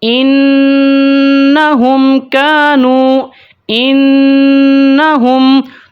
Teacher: جب بھی نون کے اوپر تشدید ہو یا میم کے اوپر تشدید ہو تو ان کی آواز کو ہم ایک مقدار تک بڑھا دیتے ہیں، ناک کے بانسے سے آواز نکلتی ہے تو اس کو ہم غنہ زمانی کہتے ہیں، ٹھیک ہے۔